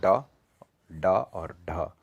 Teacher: मूर्धा याने हमारे मुंह का जो कैविटी वाला पार्ट है जो गड्ढे वाला पार्ट है वहां से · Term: मूर्धन्य